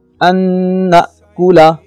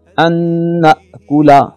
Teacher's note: ان نون ساکن ہے اور نون ساکن کے بعد ینمو میں سے نون کا لفظ آ رہا ہے، لہٰذا غنہ اور ادغام ہوگا